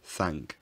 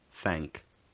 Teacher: The tongue position is low for the vowel in words like thank. It's thank, rather than the older thank.